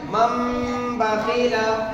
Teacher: बा आए तो नून को मीम से बदल कर गुन्ना और इख़फ़ा के साथ पढ़ेंगे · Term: इक़लाब